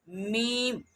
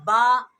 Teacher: میم ہونٹ کے خشکی والے حصے سے ادا ہوتا ہے، اور با جو ہے ہونٹوں کے تری والے حصے سے یعنی اندر والے ہونٹ کے جو حصے ہیں ان سے ادا